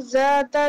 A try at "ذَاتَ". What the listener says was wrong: Where are you touching your tongue in zal? Where are you touching your tongue in the letter Zal? Okay, but it should be more softer, more gentler.